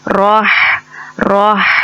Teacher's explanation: یہ ہا ہمارے حلق کے مڈل پوائنٹ سے ادا ہوتا ہے، ہمارے حلق کے درمیانی حصے سے ادا ہوتا ہے